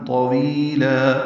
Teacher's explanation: وی یا مدہ ہے اور لا الف مدہ مد عوض ہوگا وقفاً